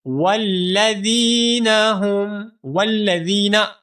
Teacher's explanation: اس ذال کو ہم ایک الف کے برابر لمبا کریں گے، کیونکہ یہاں پر یا مدہ ہے